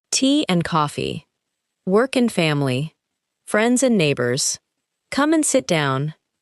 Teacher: Try to keep the important nouns and verbs clear, while making and quick and light.